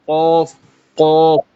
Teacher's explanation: زبان کا بالکل آخری حصہ، تو یہ جو ہے اوپر کے نرم تالو سے لگے، اس سے قاف ادا ہوتا ہے